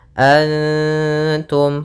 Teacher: Antum ada nun sukun bertemu dengan Ta Maka ini bacaan Ikhfa cara membacanya adalah samarkan nunnya kepada huruf ta bukan dengan dengung